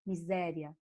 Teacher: O I quase desaparece, o A é mais forte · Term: crescente